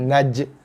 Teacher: Okey, boleh jaga huruf jim mati, jim berbaris mati, maka datanglah sifat qalqalah ataupun sifat lantunan pada huruf jim.